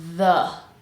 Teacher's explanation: So tongue between the teeth, vibrating, and then schwa.